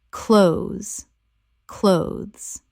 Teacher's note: 1 syllable only. The TH is almost completely silent in natural speech. It rhymes with those.